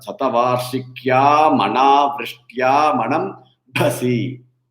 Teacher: for the starting bha and then manambhasi, both are the hard mahaprana bha